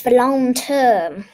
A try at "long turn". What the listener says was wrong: Not term. Turn.